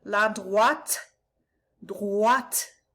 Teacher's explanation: Make sure you're saying the T, because there is an E after it